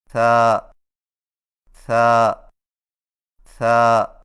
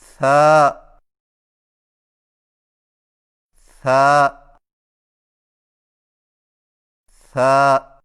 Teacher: زبان کی نوک کو ثنایا علیہ کے اندرونی کناروں سے نرمی سے لگا کر باریک آواز میں پڑھیں